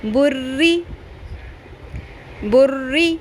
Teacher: بری بری، اس کو بری ایسے موٹا رو کو پر نہیں کرنا، کیونکہ رو کے اپنے نیچے زیر ہے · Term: باریک